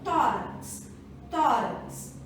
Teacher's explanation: paroxítonas são aquelas que a sílaba tônica está na penúltima sílaba